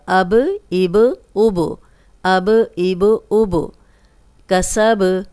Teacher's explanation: جب بھی با پہ بھی جزم آئے گی تو یہ ہلا کے پڑھا جائے گا